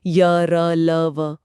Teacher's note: अंतस्थ मतलब जो बीच में स्थित हों। बोलते समय मुंह के अंग पूरी तरह से टच नहीं करते, बस हल्के से पास आते हैं। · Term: अंतस्थ व्यंजन